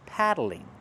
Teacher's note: Use the open a sound like black cat.